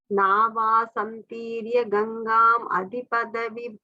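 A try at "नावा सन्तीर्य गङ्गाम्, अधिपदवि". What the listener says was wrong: The third line after Gangam, there is a comma, okay? Pause after.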